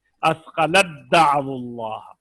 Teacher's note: دیکھیے اسقلت دعو اللہ، تا کا دال میں ادغام تھا، اسقلت دعو اللہ، تا ساکن تھی دا پر زبر تھی، تو ہم نے جب ملایا تو تا دال میں، اب تا کی آواز غائب ہو گئی اور دال کے اوپر شد آ گئی